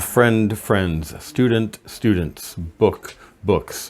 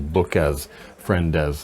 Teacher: It's essentially adding a syllable that's not necessary. Friendes is not necessary, it's one syllable, friends.